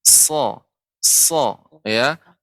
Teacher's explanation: ini juga sifatnya sofir, yaitu tajam, namun tidak boleh monyong.